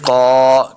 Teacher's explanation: وآخرون یقاتلون فی سبیل اللہ، قاف زبر الف قا، قاف کو موٹا پڑھنا ہے